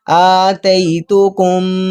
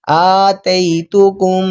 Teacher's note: اب دیکھیں یہاں پر آتیتکم کاف کو یہ شد والی میم کے ساتھ ہم ملاتے ہیں، اب میم پر شد ہے تو گنہ بھی کریں گے ساتھ ساتھ، آتیتکم، ناک کے اندر سے آواز کو نکال رہے ہیں ہم